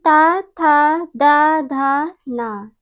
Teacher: जब हम सब इन वर्णों का उच्चारण करते हैं तो जिह्वा दंत का स्पर्श करती है। जब इन वर्णों का उच्चारण करते हैं तो जिह्वा जो है दंत का स्पर्श करती है, इसलिए इन वर्णों का उच्चारण स्थान दंत है।